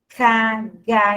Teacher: Então, a língua, ela recua